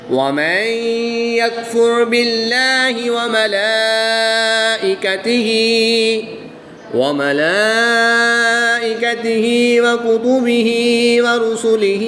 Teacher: اور یہاں پر نون ساکن کے بعد یا حروف یرملون میں سے ہے تو یہاں پر ادغام مع الغنہ ہوگا، غنہ کر کے پڑھیں گے۔ را ساکن سے پہلے حرف پر پیش ہے تو را کو پر یعنی موٹا پڑھیں گے۔ کھڑی زبر کے بعد حمزہ اسی کلمے میں ہے تو یہاں پر مد متصل ہوگی، 3 سے 5 الف تک کھینچ کر پڑھیں گے۔